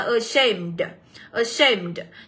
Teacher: Thì các bạn cũng sẽ nhấn vào âm đằng sau là âm A nhá. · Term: âm số 2